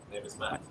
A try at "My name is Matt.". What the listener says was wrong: All right, now make sure you get the diphthong. Make sure the my.